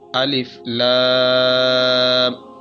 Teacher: الف آگے لام، لام کے اوپر مد ہے تو لام کو کھینچ کر پڑھا جائے گا۔ بڑی مد ہے، اس کو 4 الف سے 7 الف تک کھینچ کر پڑھا جائے گا